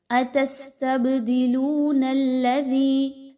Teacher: لام واو پیش لو، واو مدہ ہے، 1 سے 2 الف کے برابر پڑھیے۔ دال زیر یا دی یا مدہ ہے، دال کو نرمی کے ساتھ پڑھیں، سیٹی کی آواز کے ساتھ نہیں پڑھنا، سافٹلی پڑھنا ہے۔